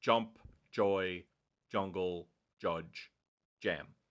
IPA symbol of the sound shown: dʒ